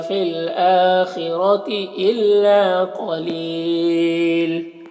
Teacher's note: لام کی دو پیش کی تنوین سکون سے بدل جائے گا تو پھر مد عارض وقفی ہوگا